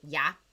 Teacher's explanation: Now I know there's 2 L's when you spell it out, but it's pronounced like a ya.